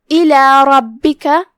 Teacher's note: را پہ جو کہ زبر ہے تو را کو ہم بھاری آواز میں پڑھیں گے